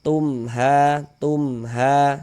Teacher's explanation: Izhar itu artinya jelas. Jadi cara membacanya dibaca jelas kemudian tidak didengungkan, maka baca pendek saja. · Ha ini dibaca panjang. Ini namanya adalah mad jaiz munfasil bukan mad wajib. · Jadi bunyi mim sukun ini kita baca jelas. Kemudian tidak didengungkan. Nah, jadi izhar itu tidak didengungkan.